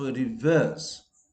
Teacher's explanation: There are two R. The first reverse R should be pronounced, and the second R is not pronounced because it is followed by a consonant sound.